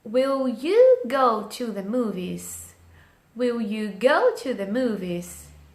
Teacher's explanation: O will, ele tá fraco, a pronúncia dele é leve. You, que é uma pessoa, que é o sujeito da minha frase, tem uma entonação mais alta.